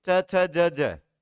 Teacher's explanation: तालव्य व्यंजन जो तालू से टकराते हैं